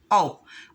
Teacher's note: इसे बोलते समय हमारा मुंह गोल हो जाता है